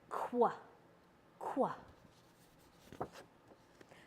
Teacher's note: This is both a K and a W sound. So you back your tongue up to the alveolar, to the velum back there, and then you round your lips for that W.